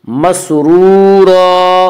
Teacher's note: واو مدہ کو 1 الف کے برابر کھینچ کر پڑھیں گے